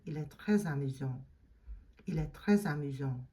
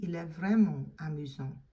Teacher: you don't do the liaison on the T